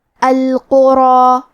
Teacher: کیونکہ مد الف اپنے پیچھے والے حرف کا حکم لیتا ہے تفخیم میں اور ترقیق میں، اور اس کے پہلے حرف الراء کا حکم ہے تفخیم، لہذا ہم حرف الراء کو اور اس کے بعد مد الف کو دونوں کو تفخیم سے مطلب بھاری آواز میں پڑھیں گے